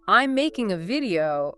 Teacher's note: So the vocal energy lands on making and video